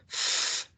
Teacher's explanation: These labiodental consonant sounds are articulated by touching the bottom lip and the upper teeth.